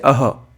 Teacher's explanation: क्यों क्योंकि इसके आगे दो बिंदु लगी हुई है ओके और हल्के से ह का उच्चारण भी आ रहा है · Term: विसर्ग